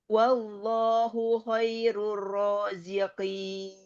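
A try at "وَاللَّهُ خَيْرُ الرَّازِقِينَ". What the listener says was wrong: Ya huruf kho-nya tebalkan lagi Mi.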